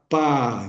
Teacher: A gente pega um fonema oclusivo, que é o p, e junta com uma vogal aberta, que é o A